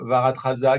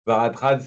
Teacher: Enfin, je crois qu'on dit Varatraz, on ne dit pas la dernière syllabe